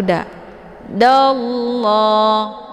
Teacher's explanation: ada lafaz Allah cara bacanya ditebalkan itu tafkim karena sebelum lafaz Allah berharakat fathah yaitu da dallah ya untuk